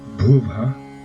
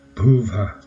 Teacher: the second Vyāhṛti Mantra, Bhuvha, simply ends with the aspirated sound ah